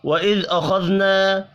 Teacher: خا حروف مستعلیہ ہے، پر پڑھیں گے، الف مدہ کو ایک الف کے برابر کھینچ کر پڑھنا ہے